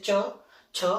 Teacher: जैसे च छ हम बोलते थे हमारी जीभा क्या होती थी वो फ्लैट होती ठीक है हमारे ऊपर वाले पार्ट को टच करती थी ठीक